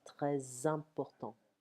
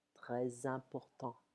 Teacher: The S of très leans into a following vowel, sounding like a Z.